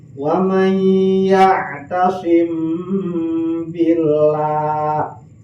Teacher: Di samping ditahan, oke, aya dengung. Lamun dikairungkeun teh eta aya angin sepoi-sepoi keluar ti irung.